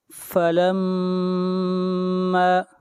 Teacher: میم کے اوپر شد ہے، غنہ ہوگا، میم کو کھینچ کر پڑھیں گے ایک الف کے برابر